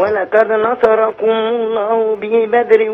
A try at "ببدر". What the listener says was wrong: لا مش بي بدر، خد بالك، بباء على طول، ببدر